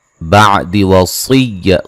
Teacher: सौद को मोटा अदा करेंगे।